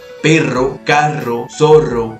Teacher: va a ser una pronunciación más fuerte más repetitiva con una vibración constante · Durante esta pronunciación de estas consonantes, la punta de la lengua vibra rápidamente, produciendo un sonido característico por la fuerza que ésta se coloca o se reposa en el alvéolo dental. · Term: la r fuerte, la R fuerte